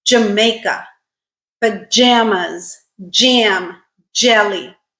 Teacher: so stop followed by a fricative · It has the d as the stop and j as your fricative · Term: affricate, second affricate